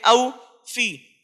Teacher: واوے لین کو نرم آواز کے ساتھ جلدی سے معروف پڑھیں گے